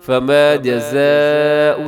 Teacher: فما جزاء، یہاں پر بڑی مد ہے جسے مد متصل کہا جاتا ہے، حروف مدہ حمزہ ایک لفظ کے اندر، تو آپ نے اسے 4 سیکنڈ تک لمبا ضرور کیجیے گا